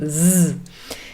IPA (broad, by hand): z